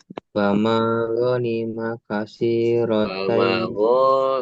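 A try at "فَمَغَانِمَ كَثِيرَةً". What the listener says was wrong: Mana panjang pendeknya?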